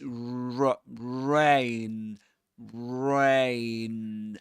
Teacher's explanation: And we begin the word rain with rounded lips.